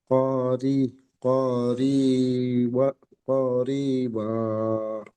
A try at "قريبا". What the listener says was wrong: করিবা বলে টান দিচ্ছেন, টান হবে না। করিবা, কব টান হবে না।